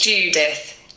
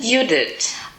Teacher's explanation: So the Ju part in the English pronunciation is you in the German pronunciation, and the th at the end is a t in the German pronunciation